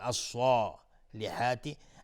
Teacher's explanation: الصالحات الف لام شمسی. صاد از حروف استعلاز غلیظ تلفظ میشه، الف هم تابع صاد غلیظ میگیم الصالحات